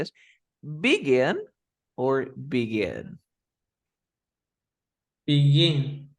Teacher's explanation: La fuerza está al final